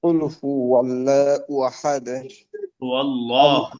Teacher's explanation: আল্লাহ শব্দে লামটা মোটা হবে, লা হবে না, মোটা ওটা হবে কেন? তার পূর্বে জবর আছে।